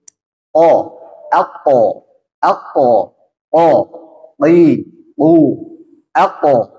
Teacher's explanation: Nah, jahar dan syiddah itu tidak mengeluarkan udara. Ya, jadi kalau dalam mengucapkan huruf qaf tidak boleh mengeluarkan udara.